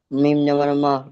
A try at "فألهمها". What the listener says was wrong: প্রথমটা হা, তারপরে এটা মিম, তারপরে এটা আবার হা.